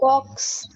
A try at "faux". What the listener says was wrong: Faux. X is silent.